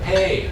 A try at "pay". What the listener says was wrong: Good pay, not good bay.